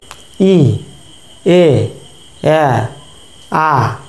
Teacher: ধীরে ধীরে আমাদের ঠোঁট প্রসারিত হচ্ছে, অর্থাৎ লম্বা হয়ে যাচ্ছে বা দুপাশে ছড়িয়ে পড়ছে। ই, এ, আ, যখন আ বলছি তখন আমাদের ঠোঁট পুরোপুরি প্রসারিত হয়ে যাচ্ছে। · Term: প্রসারিত স্বরধ্বনি